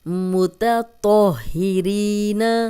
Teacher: ری یا مدہ جزم والی یا، پیچھے سے 2 حرکات لمبا کریں گے